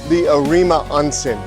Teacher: I keep saying Arima with a rolled R like I'm in Spain.